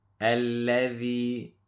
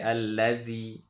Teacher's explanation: So the dhal, make sure we put the tip of the tongue, or otherwise it will sound like a za. If we say allazi, that's a za.